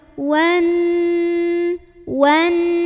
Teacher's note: Nunnya dengung dulu, tahan dulu